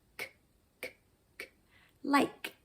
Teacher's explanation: For example, in the word liked, the last sound on the word like is the sound k or k, and that's actually what we consider a voiceless sound. If you feel your throat, you'll feel no vocal cord movement to make the sound k